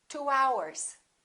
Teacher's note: Keep in mind, we insert a very little Y and a very little W sound between two vowels.